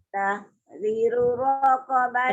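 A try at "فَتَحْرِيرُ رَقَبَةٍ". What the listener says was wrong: Ri panjang. Fatahriru raqabatin.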